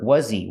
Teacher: the H in he is silent because he is not a stressed word. So you hear was he.